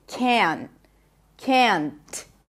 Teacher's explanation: now I really pop the T here and that is perfectly fine